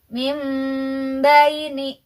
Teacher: nun sukun nya berubah menjadi Meme tapi ada samarnya juga jadi tidak mint tapi ada juga samarnya samar itu ada ikhfanya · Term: iqlab